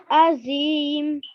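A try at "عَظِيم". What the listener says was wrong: Very nice, mashallah.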